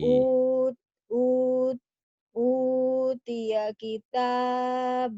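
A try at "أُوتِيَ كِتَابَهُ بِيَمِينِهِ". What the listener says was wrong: Jangan bahu. Nggak boleh dipisah. Utiya kitabahu biyaminihi fayaqulu.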